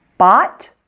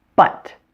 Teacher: Notice how much more my jaw drops for the ah sound for the short O than for the short U.